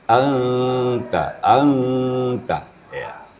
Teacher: apabila nun mati bertemu ta, maka sifatnya sedikit agak istifal e tipis. Karena nun sukun bertemu dengan ta yang istifal. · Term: ikhfa hakiki